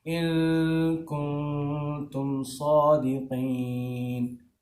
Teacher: نون ساکن جب آتا ہے نا تو نوز میں آواز آتی ہے, اس کو اخفا کہتے ہیں.